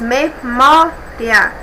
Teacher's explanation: a penúltima sílaba como a mais forte, a tônica. Então, é uma palavra paroxítona.